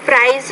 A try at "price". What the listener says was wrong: You see the word price, pronounce that P with more air, so price.